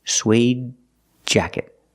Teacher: you say suede jacket you see that after suede you have a consonant so that's when you hear that stop D